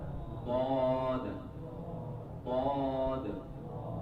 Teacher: کنارہ زبان، left side کا جو آپ کا بائیں طرف کا زبان کا کنارہ ہے، یہ کنارہ زبان داڑھ سے مل کر ضاد ادا ہوتا ہے نا، ضاد، ضاد، ہاں بائیں جانب لیفٹ سائڈ ادا کرے گا تو آسانی ہے۔